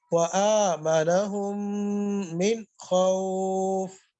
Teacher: خا کو موٹا کر کے پڑھیں گے